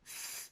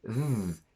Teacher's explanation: The only difference is that th is voiceless, meaning that it has no vibration in your vocal cords, whereas th does. And you can test this by placing your hand on your throat.